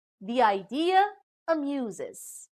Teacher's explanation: a plus juncture is placed between the adjoining vowels e from the word the and i from idea